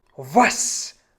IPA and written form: vas (was)